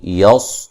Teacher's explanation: صاد کو موٹا موٹی آواز کے ساتھ، موٹی سیٹی کی آواز ہوگی